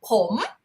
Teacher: ผม rising tone is I for a man